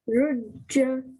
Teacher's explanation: ra with the dhamma joins onto the jim mushaddad with the fatha